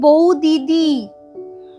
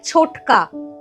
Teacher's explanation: একই ধ্বনি পাশাপাশি আছে, তার মধ্যে একটা উচ্চারণে লোপ পেয়ে যায়। যেমন বৌ দিদি উচ্চারণে হয়ে যাচ্ছে বৌদি, একটা দি লোপ পেয়ে গেছে। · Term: সমাক্ষর লোপ